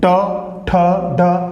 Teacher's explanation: फिर है ट वर्ग, ठीक है, ट, ठ, ढ, तो देखिए ट, ठ, ढ, जीवा जो है आपके तालव्य से जो पीछे मूर्धा है वहां पर टच करते हुए निकलेगी